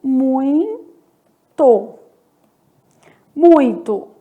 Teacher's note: Então, se eu tiver um encontro do tipo I, U, a vogal no ditongo é a primeira letra, porque ela vai ter uma pronúncia mais forte, sendo o ditongo decrescente